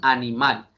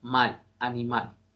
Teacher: Animal lleva acento en la última sílaba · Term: acento prosódico